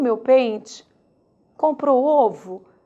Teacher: O E sofre uma variante, uma variável para o I, assim como o O sofre uma variável para o U.